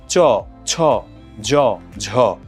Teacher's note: তালব্য ধ্বনি চ ছ জ ঝ আপনি উচ্চারণ করে দেখুন দেখুন জিওভার অগ্রভাগটা কিভাবে তালুর সামনের দিকের সঙ্গে একটা ঘর্ষণ ঘটাচ্ছে